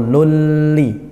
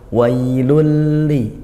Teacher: masuk tanwin atau bunyi Nun pada tanwin itu yang aslinya wailun tidak dibaca Lun lagi tapi langsung masuk ke huruf berikutnya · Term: idgham bila ghunah